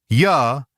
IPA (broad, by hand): j